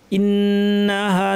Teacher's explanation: নুনের উপর তাসদীদ, লম্বা গুন্না, হামজাটা শক্ত